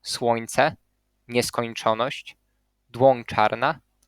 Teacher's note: There's also a very strange phenomenon happening in Polish, and it occurs when a palatal nasal nya is followed by an affricate, and then it is actually pronounced as a nasalized ya, ya, with a nasal of a place of articulation of the following affricate.